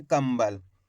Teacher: कम ब ल तो मिलके बन जाएगा कंबल इस प्रकार से अपन इसको पढ़ेंगे कंबल यानी कि आधा मा का उच्चारण करेंगे